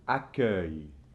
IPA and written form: akɶj (accueil)